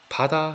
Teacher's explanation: 예를 들어서 바다 할 때 바, 다 발음할 때 어떻게 됩니까? 바 같은 경우에는 입술이 꽉 닫히죠? 꽉 닫혔다가 쫙 터트리면서 소리가 나오게 되는 겁니다. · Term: 파열음